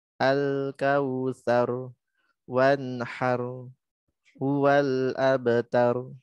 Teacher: Pastikan semua ro-nya itu tebal ya dan mengalir sedikit suaranya ya